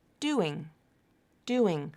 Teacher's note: two syllables but one word it's not pronounced like doing doing there's no stop between the words they're connected they're linked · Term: linking